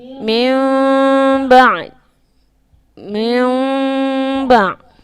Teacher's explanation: Kita kenali dengan iqlab. Cara bacaannya menukarkan bunyi nun kepada mim serta dengung.